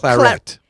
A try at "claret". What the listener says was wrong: It's actually you have to pronounce the T.